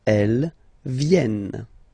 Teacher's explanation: Ils viennent, so remember this classic ending ENT for the third person of the plural is here, but phonetically it doesn't exist, so you don't pronounce it